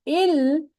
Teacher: the tip of the tongue is touching the upper teeth. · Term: lam